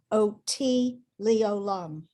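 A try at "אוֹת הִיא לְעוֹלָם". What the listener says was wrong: So interestingly, when we hear it sung, it sounds like the first 2 words are one word, OT, but it's really ot he leolam. But when they sing it, it sounds like OT, right? OT leolam, OT leolam. That's how they sing it.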